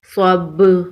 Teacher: وقف کی صورت میں با پر قلقلہ ہوگا. صاد با زبر صب با زبر با صب وقف صب.